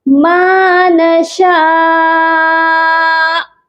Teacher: تو یہاں پر دیکھیے شین کے اوپر مد ہے، اور یہ مد متصل ہے، اور اس کا ڈیوریشن 3 سے 4 الف کے برابر ہوتا ہے۔ پہلے ہم اس کو لمبا کریں گے 4 الف کے برابر یا 3 الف کے برابر، اس کے بعد حمزہ پر آ کر جھٹکا دے کر ہم نے سٹاپ کرنا ہے